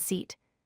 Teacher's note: The short I sound, as in sit, is quick and tight in your mouth. The long E sound, as in seat, is stretched out longer.